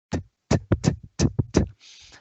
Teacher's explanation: The first sound in the word toy. There's an obstruction between the tongue and the part behind your upper teeth